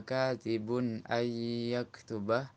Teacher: nun bertemu dengan ya idgham bi gunnah, menjaga kadar gunnah kira-kira 3 harokah